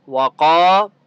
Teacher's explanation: الف مدہ ہے، قاف کو ایک الف کی مقدار کھینچ کر پڑھیں گے